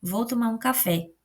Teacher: Então, o fé, ele vai ser mais forte, ele vai ter mais destaque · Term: sílaba tônica